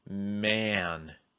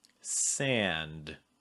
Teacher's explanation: letter n or the letter m or the letters ng then you're gonna feel your tongue slide back a little bit maybe get a little bit tenser and then you're going to add a breath out of your nose before that nasal